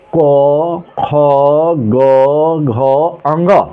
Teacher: कंठ द्वारा, कंठ एवं निचली जीभ के स्पर्श से, इसे स्पर्श व्यंजन भी कहा जाता है, बोले जाने वाले वर्ण हैं।